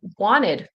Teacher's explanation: In American English, I'm going to speak to that because that's what I speak. The T will kind of disappear. It'll turn into wanted.